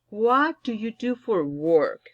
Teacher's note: Va para abajo la entonación.